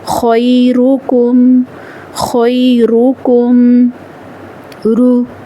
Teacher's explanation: را پر پیش ہو تو بھی را کو موٹی آواز کے ساتھ ادا کیا جائے گا